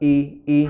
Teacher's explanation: i hamzah di pangkal tenggorokan, di kedua Pita suara i, jangan jangan digeser jadi tapi i, ya, bukan ya, itu digeser atau diseret suaranya di tapi di i ya.